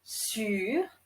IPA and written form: syʁ (sûr)